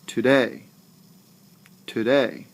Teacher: Do you hear how the second syllable of day, my voice actually rises? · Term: stressed